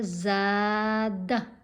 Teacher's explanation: زا کی آواز لمبی آواز ہوگی، دال کی آواز چھوٹی آواز ہوگی